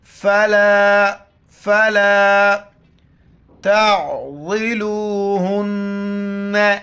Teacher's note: عین کو گلے سے کرنا، ضاد کو موٹا کر کے پڑھنا ہے